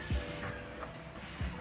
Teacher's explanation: The first word or the first letter is S. So it is voiceless alveolar fricative, wherein the air is forced through the tongue near alveolar ridge, then the vocal cord is not vibrating